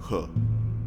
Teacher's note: And finally, the production of H is different in that there is nothing in the oral cavity that needs to form the obstruction. The obstruction is instead caused by your vocal folds. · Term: voiceless glottal fricative